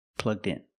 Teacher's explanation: The D sound at the end, plugged. Link with the next word, in. So you hear din din.